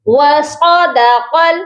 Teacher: صاد کو موٹا کر کے پڑھیں گے اور قاف کو بھی موٹا کریں گے